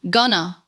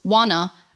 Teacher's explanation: The word going to is almost always reduced to gonna, want to becomes wanna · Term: reductions